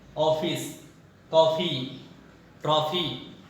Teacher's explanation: ये अंग्रेजी से हिंदी में आया हुआ है, जिसे आगत कहा जाता है, आगत वर्ण या आगत स्वर। ये न तो आ होता है और न तो ओ होता है, दोनों के बीच में ओ करके ऐसे लिखा जाता है।